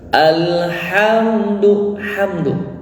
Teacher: mim mati menghadapi huruf Dal ya hukumnya adalah izhar syafawi ya tidak boleh ditahan